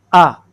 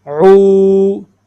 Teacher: اب اس کے اوپر زبر ہے تو اس کو حمزہ پڑھیں گے. حمزہ کی آواز ہے آ، عین عو، ہونٹ گول کیے جائیں گے